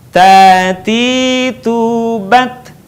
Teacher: cara melafalkan huruf ta dengan menyentuhkan ujung lidah kita dengan gusi gigi seri bagian atas dengan mengalirkan sedikit nafas kita